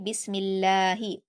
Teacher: लफ्ज अल्लाह को हम बारीक पढ़ेंगे यानी बिस्मिल्लाह आपके होंठ फैले रहेंगे जब आप बिस्मिल्लाह बोलेंगे। · یہاں پر بھی آپ کو بسم اللہ نہیں بولنا کیونکہ وہ بھاری ہو جائے گا۔ یہاں پر لفظ اللہ کو ہم باریک پڑھیں گے، یعنی بسم اللہ۔